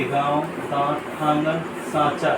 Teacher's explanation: इसे त्रिम मात्रिक स्वर भी कहते हैं। अनुनासिक ऐसे स्वरों का उच्चारण नाक और मुंह से होता है और उच्चारण में लघुता रहती है।